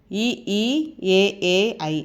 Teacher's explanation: வாயை திறந்து நாக்கின் அடி ஓரம் மேல்வாயை வந்து பொருந்துவதால் பிறக்கும் எழுத்துக்கள் இதெல்லாம்